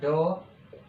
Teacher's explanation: उच्चारण करते समय जीभ एकदम ऊपर मूर्धा को लगे और अचानक से नीचे गिरे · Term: उत्क्षिप्त व्यंजन